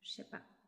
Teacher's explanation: А ще го чуете най-вероятно във варианта шепа, където ж се чува като ш.